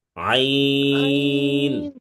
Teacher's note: আইন বলা যাবে না, আইনে 4 আলিফ টান আছে।